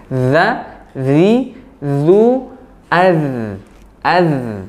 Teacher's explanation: Ujung gigi seri atas bertemu dengan ujung lidah. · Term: huruf dzal